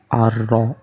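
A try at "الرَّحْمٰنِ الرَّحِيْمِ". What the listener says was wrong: kedengarannya kayak o tapi sebenarnya dia Fatha hmm bacaannya a ra Bukan ro ra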